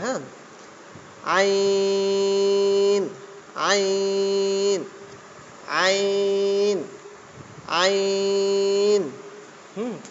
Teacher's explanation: আইন একদম গলায় থেকে হবে